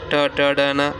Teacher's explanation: ट, ट, ड, न ये मूर्धन्य है